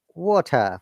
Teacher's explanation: So in water, look, T is pronounced, R is silent because it is British IPA. But Americans will say that water.